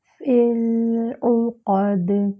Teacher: فا کے نیچے کسرہ ہے، باریک کرتے ہوئے لام ساکن سے ملائیں گے